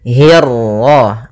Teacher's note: Kemudian hi-nya tipis, kasrah bertemu ra yang tebal. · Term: ra tafkhim, ra tafhim